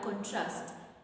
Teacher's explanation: it's an action it's a verb so we are going to stress the last syllable which is Trust you're going to stress the syllable trust because